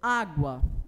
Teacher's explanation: sílaba tem lá uma semivogal e uma vogal nós temos então ditongo crescente que ele parte de uma vogal cujo som é mais baixo · Nós temos um ditongo crescente, não é isso? Justamente porque é uma semivogal mais uma vogal.